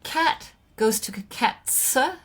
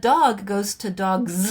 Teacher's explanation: It's because that sound of the plural, the s, acquires some of the characteristics of the preceding sound. So cat is that final sound is pronounced without vibrating your vocal folds. But dog is produced with vocal fold vibration on that last sound. And so is z.